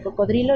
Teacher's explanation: por fenómenos de metátesis se pronuncia mal eso y se dice cocodrilo